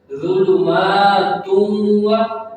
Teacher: ظلمات، اب یہ جو میم ہے نا، میم کے اوپر کھڑا زبر ہے، تو اسے ہمیں تھوڑا سا کھینچ کے لمبا کر کے پڑھنا پڑے گا